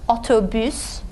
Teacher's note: Front vowel, it's rounded. You round your lips when you say U.